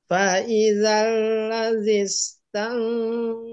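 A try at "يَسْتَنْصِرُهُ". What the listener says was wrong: Nah, belum ya. Dengungnya belum tebal. Dengungnya harus tebal juga. Tansorohu.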